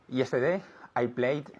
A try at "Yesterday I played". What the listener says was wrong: I played with a D sound, not with a T sound. Los dos primeros verbos que vimos fueron con un sonido T, okay? Asked, for example, okay? But now play is with a D sound, okay? So played, played, okay?